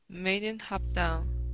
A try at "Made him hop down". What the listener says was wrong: Made him. Okay, pronounce the M. Place your lips together. Made him hop down.